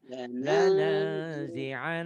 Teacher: Nunnya bertasdid guna ditahan.